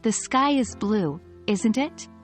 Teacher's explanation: your voice drops at the end of the sentence because you're not really asking you're telling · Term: falling intonation